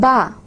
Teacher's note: Ba is according to places of articulation, it is a bilabial sound produced with the help of two lips. So this is the one feature, bilabial.